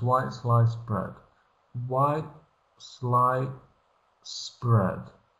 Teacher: White, I've taken away and put in the place glottostop, which is a tiny pause. And here I've moved forward the S sound into the next syllable, and I've removed the D sound.